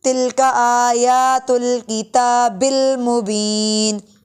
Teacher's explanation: تلک آیات کھڑا زبر کی وجہ سے لمبا کریں گے